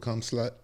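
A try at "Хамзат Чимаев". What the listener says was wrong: Hamzat. Like H. Hamzat. No, there's no slut in the word. Hamzat.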